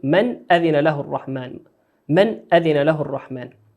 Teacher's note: النون في قوله في كلمة من نون ساكنة أتت بعدها الهمزة، والهمزة من حروف الإظهار نظهرها كما هي